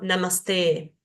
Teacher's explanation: No decimos namaste, sino namaste. Esa E dura un poquito más, porque es de por sí un sonido largo.